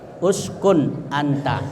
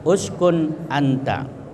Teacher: apabila ada nun mati ketemu hamzah, ya, jadi itu nunnya jelas. Uskun anta, jangan dikasih dengung, ya, jangan dipanjangkan uskun, jangan, tapi uskun anta. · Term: izhar halqi